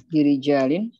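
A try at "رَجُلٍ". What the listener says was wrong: rajulin. Kalau rijalin jimnya panjang, Bu. bi rajulin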